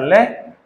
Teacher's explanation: पार्श्विक व्यंजन किसे कहते हैं, पार्श्विक व्यंजन वो होता है आपका ल, और ल को पार्श्विक इसलिए कहते हैं क्योंकि ल के उच्चारण में जो जिह्वा है आपकी पर्दे का काम करती है और जिह्वा के दोनों तरफ, पीछे से दोनों तरफ प्राणवायु बाहर निकलती है, पार्श्व से हवा बाहर निकलती है, प्राणवायु बाहर निकलती है मुख विवर से, इसलिए इस वर्ण को क्या कहा जाता है, पार्श्विक कहा जाता है।